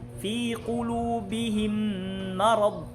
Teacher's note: Kung maririnig natin yung mim ay yung mim al-ula, yung unang mim ay napunta na sa pangalawang mim.